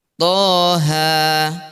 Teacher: Bismillahirrahmanirrahim. Toha, ya dibaca 2 harokat saja karena ini alif berdiri berarti 2 harokat. Toha, ma anzalna 'alaikal qur'ana litashqa.